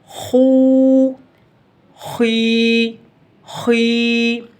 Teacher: اس کی ادائیگی کا طریقہ میں نے آپ کو بتایا تھا، کسی بھی حرف کو جب ہم نے موٹا کرنا ہوتا ہے، پر کر کے پڑھنا ہوتا ہے، تو زبان کی پشت کو، زبان کی جڑ کو ہم نے اوپر حلق کی طرف اٹھانا ہوتا ہے۔ جب زبان کی پشت کو اوپر کی طرف اٹھایا جاتا ہے تو جو حرف ہم نے موٹا کرنا ہوتا ہے وہ حرف بالکل موٹا ہو جاتا ہے۔